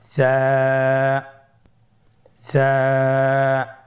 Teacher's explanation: জিহ্বার আগা সামনের উপরের 2 দাঁতের আগার সঙ্গে লাগিয়ে উচ্চারিত হয়।